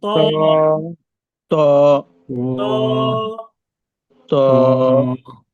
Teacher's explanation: ত হরফটি উচ্চারণের জায়গা হচ্ছে এই জিহ্বার আগাটা উপরের দুই দাঁতের গোড়ার সাথে লাগিয়ে উচ্চারণ করতে হয়।